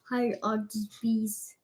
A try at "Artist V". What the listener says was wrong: Not Beast. V. Artist V.